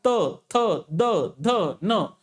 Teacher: जीभ सपकन आपल्या दाताच्या मागे लागते